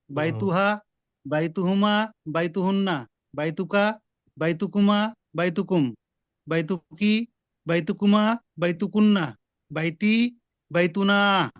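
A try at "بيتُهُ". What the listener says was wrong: মাশাআল্লাহ, এই তো সুন্দর হয়েছে।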